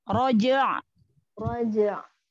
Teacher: Alirkan lagi sedikit huruf ainnya.